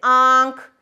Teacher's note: नून लिखा तो जा रहा है लेकिन देखिए उसकी आवाज आंख में गुम हो गई है। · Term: नून गुन्ना